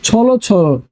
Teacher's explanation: দ্বিরুক্তি শব্দ থাকলে উচ্চারণে অন্ত অ ও হয়ে যায়